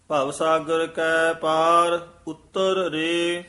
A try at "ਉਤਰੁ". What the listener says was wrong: ਇਹ ਉੱਤਰ ਉਚਾਰਨ ਕਰਨਾ, ਉਤਾਰ ਨਹੀਂ ਕਹਿਣਾ ਹੈ।